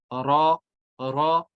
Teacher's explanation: अब रॉ की तरफ आते हैं, रॉ। रॉ होगा जुबान की नोक, ये लगेगी तालु के साथ, तो अदा होगा रॉ, रॉ।